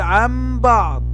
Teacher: فإذا جاء بعد النون الساكنة أو بعد التنوين حرف الباء فيكون هذا إقلاب، فنقلب النون الساكنة ميما